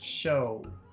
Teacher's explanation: it's a very long sound it's two sounds again it's oh it's oh it's not oh it's oh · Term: final vowel sound